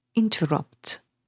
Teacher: Here the stress is on the very last syllable, rupt, while the first two syllables are unstressed. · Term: anapestic foot